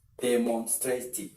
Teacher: the stress should be at the second syllable